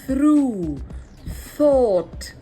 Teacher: it's a soft sound just like the F but it puts your tongue out